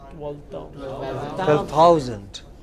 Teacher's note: Stress on the 1,000.